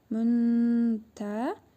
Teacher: cəzimli nun hərfini burnumuzda tələffüz edərək 1 əlif miqdarı uzadırıq. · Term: İhva qaydasına